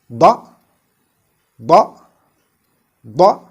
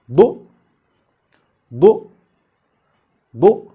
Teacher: it's a thick or a heavy letter, as it is also articulated with a raised root of the tongue